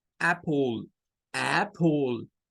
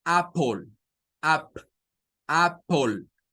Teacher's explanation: es la mezcla entre una a y una e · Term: sonido corto